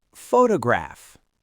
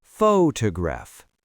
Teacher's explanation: The stress is on the first syllable, photograph. So the first O is a clear, strong O sound. The other two syllables are unstressed, so they both get reduced to a schwa.